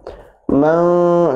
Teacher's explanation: man ditahan 2 harakat dan didengungkan